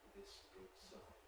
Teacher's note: the s of sign is also voiceless, so the voicing switches off quite early.